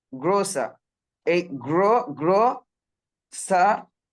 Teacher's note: পরের আরটাকে সাইলেন্ট করে দিতে পারি আমরা